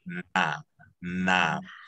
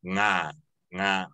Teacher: With na, your tongue is coming up to the front of your teeth. Na, na. With nga, it's in the back. Nga, nga. Like, you see how my tongue's back here?